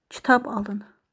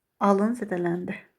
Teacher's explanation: Alın sözündə vurğu əvvəlci hecada bir də sonuncu hecada ola bilər və hər dəfə fərqli məna bildirir.